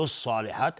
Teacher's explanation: صاد از حروف استعلاء و الف هم تابع صاد غلیظ تلفظ میشه